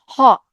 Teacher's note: এরপরে আসি কণ্ঠনালীয় ব্যঞ্জন, হ। এটাকে একদম একদম কণ্ঠের ভিতর থেকে আসতেছে, হ। হ উচ্চারণ করেন তো, হ।